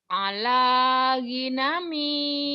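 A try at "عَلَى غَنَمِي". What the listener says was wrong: Go bukan gi, go. Ala gonami.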